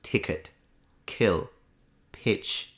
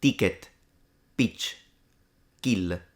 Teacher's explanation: Well, with an Italian accent, the aspiration goes away completely. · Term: completely unaspirated